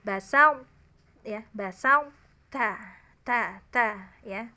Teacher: Ya, jadi basa berarti to-nya tetap dibaca, hanya dihilangkan qalqalahnya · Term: idgham naqis